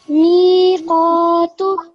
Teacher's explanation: So you knew you had to make the mi long because after the meme you have a ya sakin, which is a haruf al-madda.